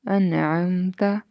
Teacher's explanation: نون ساکن ہے لیکن اس کے آگے حروف حلقی میں سے آ رہا ہے تو یہاں غنہ نہیں ہوگا